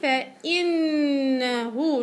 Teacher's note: نون مشددة، اعطيها غنة طويلة